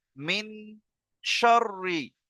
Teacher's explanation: এক আলিফ পরিমাণ নাকে তুলে গুন্না করে পড়তে হবে। তাহলে মিন তারপরে শিন রববার শার।